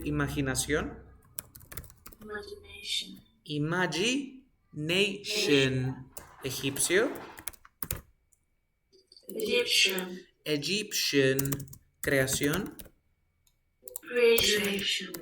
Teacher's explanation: when you have the t plus IO you pronounce the T like shh